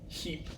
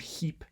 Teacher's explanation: if you produce it kind of really intensely, turns into like a voiceless palatal fricative in English